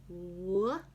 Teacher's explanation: along the the veum at the back of the mouth W when you say our W sound you can feel the lips sort of gliding forward